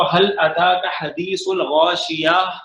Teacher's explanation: حل اتاک حدیث الغاشیہ پڑھتے ہیں، ہا کی آواز ہوتی ہے، حالانکہ ہے یہ تا